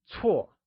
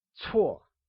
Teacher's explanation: Bad translates to 错 and is pronounced using a falling tone or the fourth tone.